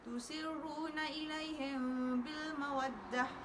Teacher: ikhfa syafawi perlu direnggangkan sedikit antara dua bibir